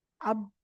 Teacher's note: বাকে একবার ডানদিকে অক্ষরের সঙ্গে মিলিয়ে পড়ছি আগের অক্ষরের সঙ্গে মিলিয়ে এবং দ্বিতীয়বার সেই অক্ষরটাই পড়ব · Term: তাসদিদ